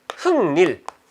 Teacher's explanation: 자, 여기서 흑, 닐 없던 니은이 생기게 되는 거죠. 그 다음에 이 니은 비음의 영향을 받아가지고 기역이 어떻게 돼요? 같은 조음 위치에 있는 어떤 그런 비음으로 바뀌게 되죠